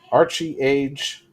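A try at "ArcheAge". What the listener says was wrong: Yeah, the E silent.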